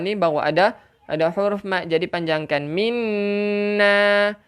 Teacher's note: Pastikan wajib al-ghunnah dulu. Pastikan dengung dahulu, kemudian baru panjangkan.